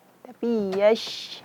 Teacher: Karena shin itu makhrajnya bukan dari bibir, tapi dari tengah lidah.